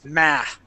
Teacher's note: when you pronounce that A, your tongue in the back of your mouth is kind of closing the air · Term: American whiny A